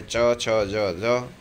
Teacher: તાળવા પાસેથી જીભ અડે ત્યારે ચ, છ, જ, ઝ.